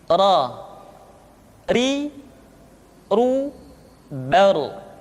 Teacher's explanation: huruf ra, diucapkan dengan menyentuhkan punggung lidah dengan langit-langit